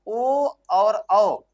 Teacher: तो इसका लिए इसका नाम जो होता है दोस्तों नाम पड़ गया इसका कंठ तालव्य कंठ तालव्य इसका नाम क्या पड़ गया कंठ तालव्य और बचा आपका ओ और औ ओ और औ ये दोस्तों क्या होता है ओठ से भी बोला जाता है और उसके साथ-साथ आपका कंठ से भी बोला जाता है इसलिए इसका जो नाम पड़ गया दोस्तों क्या कंठ तालव्य क्या नाम पड़ गया सॉरी हां कंठ तालव्य नहीं कंठ ओष्ठ क्योंकि इसमें क्या हो रहा है ओष्ठ का भी प्रयोग प्रयोग किया जा रहा है तो नाम क्या हो जाएगा दोस्तों?